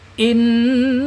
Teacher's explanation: nun ini ketika dia bertasdid bacaannya gunnaah ya. Gunah harus ditahan inna gitu seperti itu contohnya ya guna.